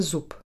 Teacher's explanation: v slove zub sa znelé b zmení na neznelé p, aj keď stojí samo a nesusedí s hláskou rozličnej znelosti. Za slovom môže nasledovať aj prestávka a zmena sa udeje kvôli lepšej výslovnosti.